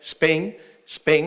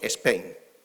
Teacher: como en castellano no existe, tenemos que regularizarlo a la estructura silábica del castellano. Entonces le metemos una E. Entonces decimos Spain.